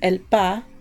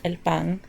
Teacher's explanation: So it's the same exact word in Spanish except they drop the N.